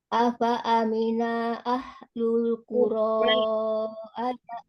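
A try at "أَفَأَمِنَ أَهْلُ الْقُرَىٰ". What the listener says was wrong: A, fa, a, mi, na, a itu sama ya, satu harokat semua tuh. Jadi jangan dipanjangin nanya. Afa amina ahlul, afa amina ahlul, sama. Diperhatikan lagi yang di afa amina ahlul. Itu jangan berhenti tuh dinanya. Afa amina ahlul.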